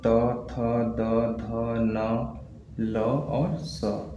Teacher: इन व्यंजनों का उच्चारण करते समय जो हमारा जीभ होता है दांत को टच करता है। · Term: दंत व्यंजन